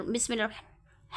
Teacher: ہا جو ہے وسط حلق سے ادا ہوتا ہے، اس لیے ہا کو جو ہے ہم ٹھنڈی سانس کے ساتھ بھی ادا کریں گے۔